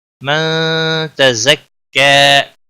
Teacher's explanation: نون ساکن کے بعد حروف اخفا کا تا آیا ہے، اخفا حقیقی ہوگا، غنہ کے ساتھ پڑھیں گے